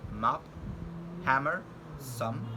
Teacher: M, which is voiced bilabial nasal sounds